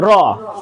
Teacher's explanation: আর রটা হচ্ছে কম্পনজাত। র উচ্চারণের সময় জিহ্বার অগ্রভাগ কি হবে? একটু কম্পিত হবে।